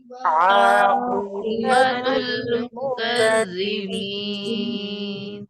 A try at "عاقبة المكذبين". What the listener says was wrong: आक़िबातुल नहीं है, बा के ऊपर खड़ी जबर नहीं है, आक़िबा नहीं पढ़ना है, आक़िबतुल पढ़ना है। आक़िबतुल मुकज़्ज़िबीन।